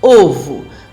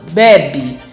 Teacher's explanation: quando as vogais E e O são pós-tônicas, elas sofrem o que chamamos de redução. Elas são pronunciadas de maneira mais fraca e soam como um I e um U.